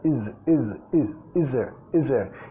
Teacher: Nota el sonido Z, is there. Y acá casi suena como se está comiendo la TH sonora